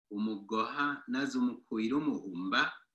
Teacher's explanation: So in this case, the man who hit the boy, that first vowel of the verb there, that a, maintains its high tone